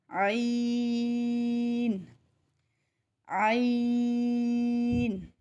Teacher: ناک کے اندر آواز نہیں جائے گی، 3 سے 5 الف کے جتنا کھینچ کے ادا کریں گے اور اس کو ادا کرتے ہوئے حلق کے اوپر دباؤ سیکھنے کے لیے، عین سیکھنے کے لیے حلق کے اوپر دباؤ ڈال کر اس کو ادا کریں۔